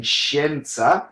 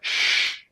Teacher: in Italian, the sh sound is a lot more sealed. It doesn't have sh so much air escape in it.